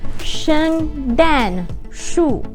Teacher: So they're all falling tones.